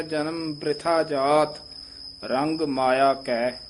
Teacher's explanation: ਰਾਰੇ ਨੂੰ ਸਿਹਾਰੀ ਲਾ ਕੇ ਉਚਾਰਨ ਕਰਨਾ ਹੈ ਪੋਲਾ ਬੋਲਣਾ ਹੈ